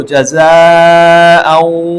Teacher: حمزہ کے اوپر 2 زبر کو واو کے ساتھ ملایا جا رہا ہے، دونوں کو اکٹھے پڑھا جا رہا ہے، تو اسی کام کو ادغام کہتے ہیں۔